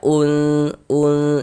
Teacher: Nah, kemudian cara membaca ikhfa hakiki itu dibaca dengan samar. Jadi bunyi nun sukun atau bunyi tanwinnya itu dibaca samar.